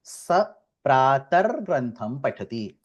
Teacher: So the visarga of saha is removed and the visarga of prataha becomes ra.